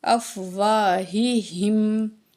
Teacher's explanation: یہ ہا جو ہے یہ دو آنکھ والی، اس کو ہم سینے سے نکالتے ہیں